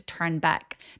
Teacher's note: turn back 할 때 에 소리 굉장히 길게 나는 장모음이니까 기억해 주시고요.